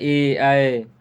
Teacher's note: यह है कंठ तालव्य, कंठ से बोला जाता है